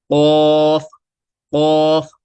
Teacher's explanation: تو تالو کے نرم حصے سے جب یہ لگتی ہے زبان کی جڑ، تو وہاں سے ادا ہوتا ہے او، قوف۔ زبان کی جڑ تالو کے نرم والے حصے سے لگتی ہے تو قوف ادا ہوتا ہے